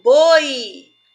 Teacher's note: Agora, quando eu falo boi, o som mais forte é do O. Então, o I, eu vou chamar ele de semivogal